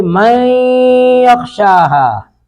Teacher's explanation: من نون ساکن کے بعد یا ہے تو نون ساکن کا ادغام کریں گے یا میں ، تو من کو پڑھیں گے من یخشاها۔ ابھی نورانی قاعدہ